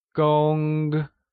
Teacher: Gong is pronounced using a high-level tone